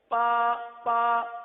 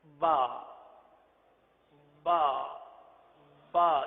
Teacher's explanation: با کی بجتی ہوئی آواز، اور یہ صرف تر حصے سے ہی ادا ہو سکتی ہے، خشک حصے سے ادا نہیں ہو سکتی.